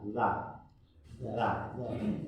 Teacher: Za itu makhraj hurufnya di ujung gigi bertemu dengan ujung lidah. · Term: Zal